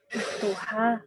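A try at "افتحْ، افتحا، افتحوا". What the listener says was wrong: Iftah, iftaha, iftahu. Taknya nggak berubah. Tak, ya.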